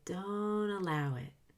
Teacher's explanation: I can just say don't allow it with no T at all. That's because don't won't be confused with do.